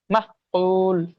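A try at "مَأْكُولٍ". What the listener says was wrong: মাহ হবে না, মা। মা।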